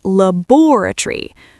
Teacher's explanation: British English, we place the stress on the second syllable.